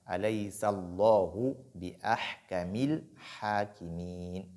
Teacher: la lettre lam de Allahu est lue avec tafkhim, donc avec emphase